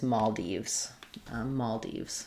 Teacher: So secondary stress on Dives and primary stress on mal.